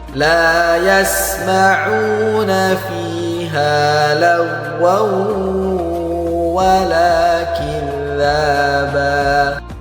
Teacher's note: Huruf gha ketika berharokat sukun tidak boleh dipantulkan.